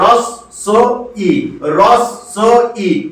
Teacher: আর দন্ত স-এর সঙ্গে বটা ফলা হিসাবে যুক্ত আছে, তাই দন্ত স-টা ডবল উচ্চারণ হয়ে যাবে।